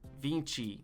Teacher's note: How do I forget that the T E or the T I is a ch sound.